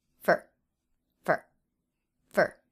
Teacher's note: for is one of those words that's often reduced to fir